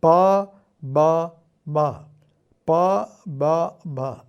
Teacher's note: മുൻപിൽ നിന്ന് പിറകോട്ടേക്ക് പറഞ്ഞു നോക്കാം പ ബ മ പ ബ ഭ താഴത്തെ ചുണ്ടാണ് ഇതില് ഇളകുന്ന ഭാഗം താഴത്തെ ചുണ്ട് മുകളിലേക്ക് പോകുന്നു എന്ന് ഓർത്തുവെച്ചാൽ മതി അപ്പൊ ഇതിനെല്ലാത്തിലും പാക്യം ബാക്യം മാക്യം ഇനി തയുടെ കാര്യത്തിൽ